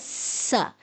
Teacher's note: سین سیٹی والا حروف ہے، دانتوں کو ملانے کے سے ادا ہوتا ہے